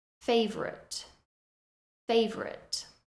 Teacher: The spelling looks like it should be favorite, but we do reduce that second syllable